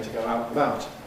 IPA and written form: tə ˈgəʊ ˈaʊt nəˈbaʊt (to go out and about)